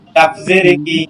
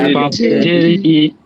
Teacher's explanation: কাফ হচ্ছে একদম পাতলা করে ক্যাপ কফ হচ্ছে মোটা করে কলকলা করে কফ